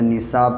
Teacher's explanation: جب حمزہ اسی کلمے میں ہوتا ہے تو مد متصل ہوتا ہے، تو ان کو کھینچ کے پڑھیں گے کم سے کم 3 سے 4 الف کے برابر